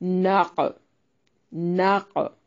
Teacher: بھی ہا مد اصلی ہے، ناق نون کو باریک پڑھیں گے اور قاف کو موٹا ادا کرنا ہے اور اس پہ قلقلہ بھی کرنا ہے، یعنی اسے ہلا کر پڑھیں گے، ناق ناق۔ عین کو واضح نکالنا ہے، وقف کی صورت میں الف مدہ میں تبدیل کر لیں گے، ایک الف کی مقدار کے برابر اس کو لمبا کرنا ہے، اور یہاں بھی ملا کر پڑھنے کی صورت میں نون تنوین کا اخفا ہوگا۔